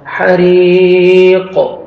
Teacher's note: قاف کو ساکن کریں گے قاف کو ڈبل ساؤنڈ آئے گا حروف قلقلہ میں سے ہے قاف.